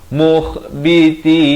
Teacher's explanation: kha di hujung kerongkong